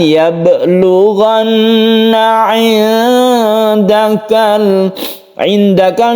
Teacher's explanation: ketika kita membaca nun, kita bersiap membaca dal. Jadi dipanjangkan membacanya. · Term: ikhfa